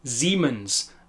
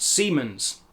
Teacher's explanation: the S at the beginning of the word is pronounced more in line with an English Z or Z